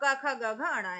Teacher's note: का से कंठ में कार है ना, तो का से का को जोड़िए। और का वर्ग को पूरा ही उच्चारित करना होता है कंठ से।